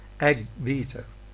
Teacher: phase 3 for g is missing. Therefore, phase 1 for b is missing because we have got a sequence of two stops here. · Phase 2 of both stops overlap, so that when phase 3 of the latter comes, there can be no burst of escaping air with its accompanying noise, since the structure for the second stop prevents this.